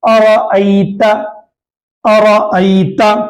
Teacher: اسی طریقے سے ارأیت، ارأیت الذی، جو سورۃ الماعون کا ابتدائی سورت، ابتدائی آپ کو یہ حروف ہے، ارأیت الذی، ارأی میں یہاں پر یا لینا ہے، یعنی یا ساکن یا سکون ہے، یا ساکن سے پہلے زبر ہے تو یا لینا ہو گیا، اس کو نرم اور جلد پڑھیں گے